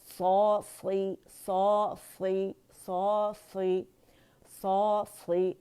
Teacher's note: اور صاد جو ہے یہ موٹا لیٹر, اس میں اتباق ہے, زبان تالو سے لپٹ جاتی ہے تو یہ کسرہ کے ساتھ بھی موٹا ہی پڑھا جائے گا